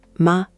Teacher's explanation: It's a neutral tone, often very light.